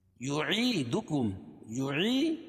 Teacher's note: یا ساکن سے پہلے عین کے نیچے زیر ہے تو یا مدہ، تو اس کو ایک الف کے برابر کھینچ کے پڑھیں گے